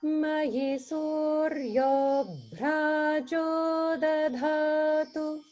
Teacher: There's holding on the bra because it's a conjunct sound.